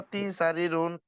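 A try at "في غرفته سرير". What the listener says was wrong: দেখে পড়েন, ফি গুরফাতি নাকি ফি গুরফাতিহি?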